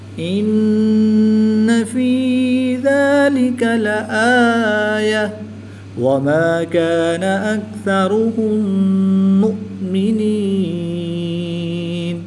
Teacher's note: میم مشدد اور نون مشدد میں ہمیشہ غنہ ہوتا ہے، تو یہاں پر ہم غنہ آنی کر کے پڑھیں گے